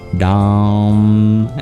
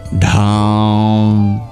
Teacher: You can hear an extra breathy sound in the second one. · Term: aspirates